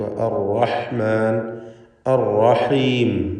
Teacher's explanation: ഇവിടെ തക്രീർ വരാതെ സൂക്ഷിക്കേണ്ട സന്ദർഭമാണ്. ഷദ്ദുള്ളത് കൊണ്ട് അർ എന്ന് വിറയൽ വരരുത്. ഹ വ്യക്തമായ മഖ്റജിൽ നിന്ന് ഉച്ചരിക്കുക.